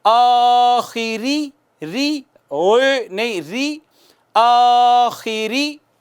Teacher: باریک کریں گے، زیر ہے، آخری، ری، نہیں، ری، آخری.